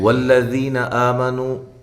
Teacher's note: یہ لام جو ہے اس کو موٹا نہیں پڑھنا، باریک پڑھنا ہے